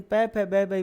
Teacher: पै वर्ग में दोनों हंठ टकराएंगे आपस में।